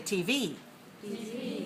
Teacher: when we use an acronym the alphabet we have to stress the last one so if we have TV we have two letters which one